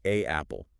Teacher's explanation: There's a weird awkward pause. I can feel a sort of click in the back of my throat. It feels like my speech is stalling out. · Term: glottle stop